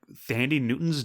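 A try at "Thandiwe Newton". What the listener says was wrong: Actually, it's from what I understand, is the proper pronunciation these days is Tandaway. Tandaway Newton. She actually, like, early in her career, had to drop like the last little like syllable of her name.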